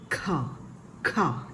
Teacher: ക എന്ന ശബ്ദത്തോടൊപ്പം ഹ എന്ന ചേർത്താണ് ഖ എന്നതിന് ഉച്ചരിക്കേണ്ടത്. കായുടെ ഉച്ചാരണം കഴിഞ്ഞൊരു ഹായുടെ ശബ്ദം കൂടെ കേൾക്കണം.